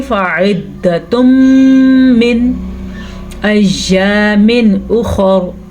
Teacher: जब भी नून साकिन या तनवीन के बाद या मीम वाव नून आ जाए तो इदगाम बिल गुन्ना का कायदा हो रहा है, यानी कि इसका मतलब ये है इदगाम आपस में मिला देंगे, बिल गुन्ना गुन्ने के साथ मिलाएंगे